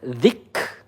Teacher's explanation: kaf sukun itu sifatnya hamas